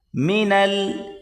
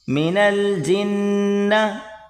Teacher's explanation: نون کو لام کے ساتھ ملا کر پڑھیں گے